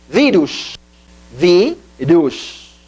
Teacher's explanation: Maior inflexão da voz na vi, então se acentua.